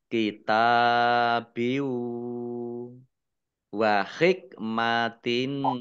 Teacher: Idgham masuk, bi dengan gunnah mendengung. Maksudnya langsung masuk ke huruf wawu, ya, mendengung wawu, tanwinnya tidak dibaca. Kitabiu wa hikmatin. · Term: idgham bi gunnah